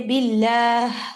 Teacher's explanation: بالکل ڈیپ، اس کا مخرج بہت نیچے ہے، اور یعنی اس کی آواز بہت نحیف سی آتی ہے، ٹھیک ہے، جیسے باللہ. اب آخر میں جو آپ ہا ریلیز کریں اس کی آواز کافی نحیف ہوتی ہے